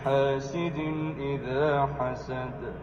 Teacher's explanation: اینڈ پہ جب دال ساکن ہوگا تو یہ حروف قلقلہ میں سے ہو جائے گا